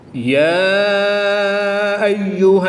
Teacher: کھڑی زبر کے بعد حمزہ دوسرے کلمے میں ہے تو یہاں پر مد منفصل ہوگی، 2 سے 3 الف تک کھینچ کر پڑھیں گے۔